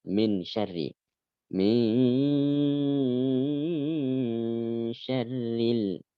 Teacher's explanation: ketika membaca ghunnah ini seringkali lebih dipanjangkan